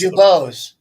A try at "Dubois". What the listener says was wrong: Dubois. If it's Dubose, if I'm thinking, it would be Dubois. The S is always silent. It would be Dubois.